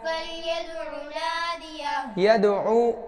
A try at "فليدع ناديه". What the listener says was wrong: यदउ आइन की आवाज़ सही से आए। फलयदउ नादियह, दाल पे कलकला करेंगे।